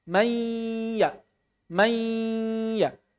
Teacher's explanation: Di satu sisi lidahnya sudah ya. Di sisi yang lain suara gunnahnya nun masih tersisa. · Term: idgham naqis